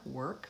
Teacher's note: in the word work it's simply an ER work there's no additional vowel